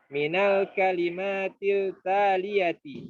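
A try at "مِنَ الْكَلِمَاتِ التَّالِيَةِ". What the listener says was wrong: Minal kalimatit taliyati. Taliyati. Sering ngaji, akhi. Ini dibaca samsiah, akhi. Minal kalimatit taliyati.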